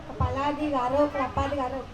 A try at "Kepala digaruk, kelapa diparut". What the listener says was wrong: Nah, ada dua digaruk. Kepala digaruk, kelapa diparut.